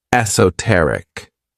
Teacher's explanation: This word has four syllables and the stress is on that third syllable